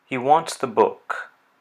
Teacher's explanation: There you hear falling intonation with the word book being stressed.